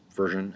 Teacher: the accent will be over the first syllable